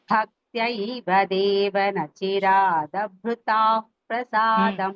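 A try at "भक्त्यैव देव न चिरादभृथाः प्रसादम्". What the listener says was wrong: நீங்க பிரு சொல்லும்போது தா மகாபிராணா இட்ஸ் நாட் ஹியரிங் கரெக்ட்லி.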